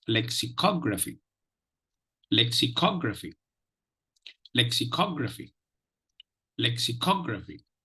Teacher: see the third syllable will be the Prime Minister syllable the first syllable will be the secondary stress syllable